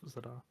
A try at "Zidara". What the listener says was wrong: Zidara. You said Zidar.